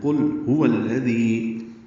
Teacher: ذال کو نرمی سے ادا کرنا ہے، 2 حرکات لمبا کرنا ہے